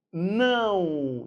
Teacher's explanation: Em vez de ser som de O, é U.